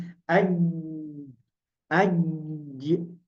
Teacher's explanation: Huruf al-jim wal shin wal ya, huruf jim, shin dan ya itu keluar dari syigratul al-fam.